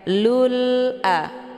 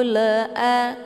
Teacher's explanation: Alif lamnya dibunyikan secara jelas atau jelas bunyi l-nya lul a kata lain juga disebut dengan izhar qamariah nufashilul a